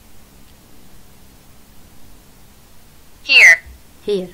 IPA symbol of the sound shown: iə